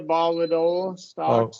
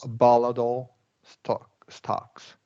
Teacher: we're going to do a flap T there